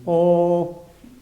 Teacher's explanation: En ese mismo ángulo de abertura, pero cuando la lengua retrocede hacia el velo del paladar, ahí se produce la O. Tenemos O.